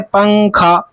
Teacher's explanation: اس کے اندر نون ہوتا ہے لیکن نون کی آواز نہیں آتی، وہ چھپ جاتا ہے ناک میں